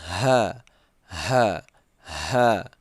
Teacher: itu juga keluar angin ya saat kita membaca juga keluar angin itu keluar di tenggorokan paling bawah